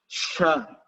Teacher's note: Ya, shin dia naik sedangkan shin, dia tengah lidahnya naik dan mengeluarkan udara yang berlebih. Sha. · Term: tafasyi